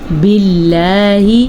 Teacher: لفظ اللہ کو باریک سے باریک پڑھیں گے کیونکہ اس سے پہلے حرف نیچے زیر ہے